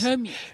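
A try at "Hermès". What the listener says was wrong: No, it's Hermes. The Hermes. H is silence.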